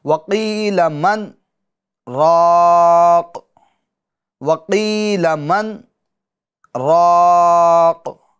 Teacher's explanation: تو دیکھیں آواز رک گئی، سانس جاری رہی، اسی کو کہتے ہیں سکتہ